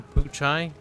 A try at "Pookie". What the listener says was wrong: Pookie. Yeah, that's how you pronounce the CH in that word. It's Pookie.